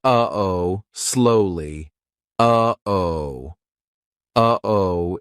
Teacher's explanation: We aren't making the same mouth formation like we do for the true T or even the held T. It's coming from our throat. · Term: glottal stop